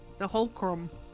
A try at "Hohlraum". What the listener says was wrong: There's no C.